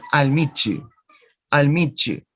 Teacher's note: these two sounds, ta and ya, and you produce a third sound that is the consonant ch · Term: Reciprocal assimilation